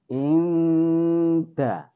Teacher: Jadi inda kelihatan seperti N, tetapi di situ ada samar-samarnya, juga ada dengungnya. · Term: ikhfa hakiki